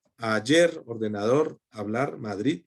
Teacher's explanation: llevan el acento en la última sílaba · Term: agudas